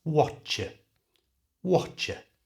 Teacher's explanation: I said it in a fast natural way and the what are became Watcher